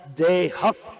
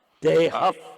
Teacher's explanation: то есть это как бы этот звук, он соединяется со звуком, который идет после висарги. So the word dehaha should be pronounced dehaf because the next syllable is p, pa. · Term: Visarga